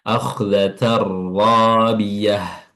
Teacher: Ya, langsung saja tanpa ada alkhaisyum yang terlibat di situ atau suara hidung seperti beda dengan idgham bighunah. Ini idgham bila ghunah tidak disertai dengan suara hidung. · Ini idgham bila gunnah tidak disertai dengan suara hidung.